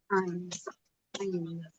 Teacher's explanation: Baik, huruf Ain sama ya, dia keluarnya dari tengah tenggorokan juga. Ya, huruf Ain keluarnya dari tengah tenggorokan